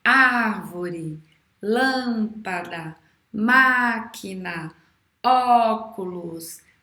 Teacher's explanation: proparoxítona é quando a antepenúltima sílaba é a mais forte